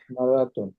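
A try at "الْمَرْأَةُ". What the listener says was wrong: মারআতু আলিফ লাম থাকলে শেষে তানবিন হবে না।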